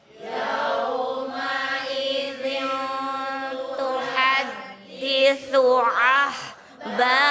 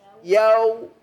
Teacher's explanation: Yauma idzin tuhaddisu ahbaraha. Bu, jangan ke O ya. Ke U. Yau. Kan madlen ya.